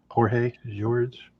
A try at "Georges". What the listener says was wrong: It's George with an S at the end. I think it's Georges. That's how the podcaster pronounced it this morning.